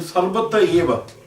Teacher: The visarga is gone. Visarga is gone because of the A.